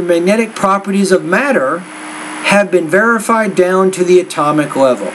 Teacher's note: After each thought group, the tone slightly rises in pitch until we get to the last thought group, or the last word in the last thought group, and then the tone drops.